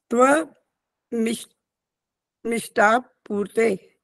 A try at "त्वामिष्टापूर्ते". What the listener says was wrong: अब ये जो अटक अटक के बोला ऐसे मत बोलो, पूरा इकट्ठा बोलो। अब शब्द त्वामिष्टा पूर्ते होता है,